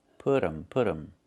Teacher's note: The T changes to a fast D.